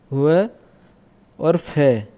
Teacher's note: व फ का उच्चारण जब हम करते हैं तो नीचे का ओठ ऊपर वाले दांतों को स्पर्श करता है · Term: दंतोष्ठ व्यंजन